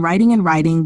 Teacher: The first rule, tapping, changes ta and da into a flap between vowels, as seen in writing and writing, both being pronounced with a flap. The second rule, vowel raising, normally raises vowel before a voiceless consonant, distinguishing writing from writing.